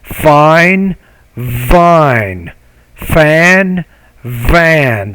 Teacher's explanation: You need to pronounce that V with a little bit more vibration.